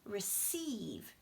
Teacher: receive stress comes on the second part